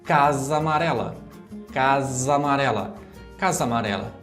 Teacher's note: Porque a gente tem lá a palavra casa, termina com A, e a palavra amarela também começa com a letra A. Então a gente é como que une essas duas palavras formando uma só.